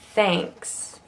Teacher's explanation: notice how it gets kind of nasal because of the N